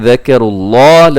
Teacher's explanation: لفظ اللہ کو بہت موٹا پڑھیے گا